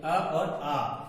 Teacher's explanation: अ और आ, ये दोनों वर्ण जो है कहां से उच्चारित होंगे, कंठ से उच्चारित होंगे